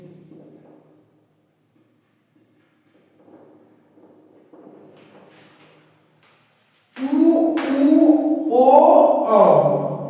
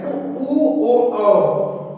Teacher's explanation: उ ओ औ मतलब जैसे वृत्त ओठों का आकार गोल हो जाता है। वृत्त के आकार को उसे वृत्त आकार कहते हैं। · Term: वृत्ताकार